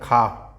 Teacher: स्पर्श व्यंजन, कंठ ध्वनि, अघोष और महाप्राण ध्वनियाँ हैं कैसी साथियों?